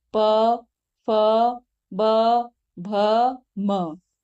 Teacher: प वर्ग में जितने भी वर्ण हैं वह सब होठों की सहायता से बोले जा रहे हैं, तो उसे क्या कहते हैं, ओष्ठ्या वर्ण।